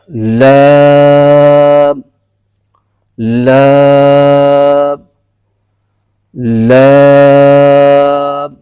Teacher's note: زبان کا کنارہ اور ضاحک سے ثنایا تک کے مسوڑوں سے ادا ہوتا ہے۔